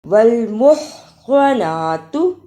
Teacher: ہا کو نکالنے کا طریقہ حلق سے آواز کو رگڑ کر نکالنا